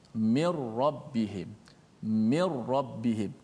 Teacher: Tak boleh kita baca min, tak ada dengung nun, tak boleh. Terus masukkan nun dalam ra.